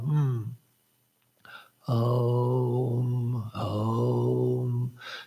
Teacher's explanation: one should begin in the back and move gradually up to the lips with the closing sound of Om